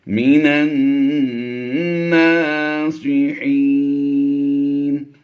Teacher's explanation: مینن، نون نون زبر نن کی آواز دیں گے. الف اور لام دونوں سائلنٹ رہیں گے